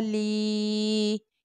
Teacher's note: یہاں پر یا مدہ ہو رہا ہے اس لیے ہمیں کھینچ کر پڑھنا ہے اپ ٹو 1 الف